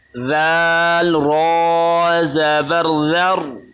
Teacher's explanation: ये रॉ मोटा पढ़ा जाएगा नाज़रीन, क्योंकि इसके पीछे वाले हर्फ पर ज़बर है।